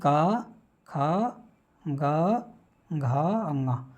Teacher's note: ये जो ध्वनियां है ये कहां से निकलती है? कंठ से निकलती हैं।